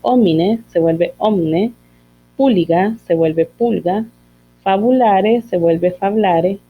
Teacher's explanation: tenemos otro caso de síncopa de vocales átonas internas, ¿verdad? Que se pierden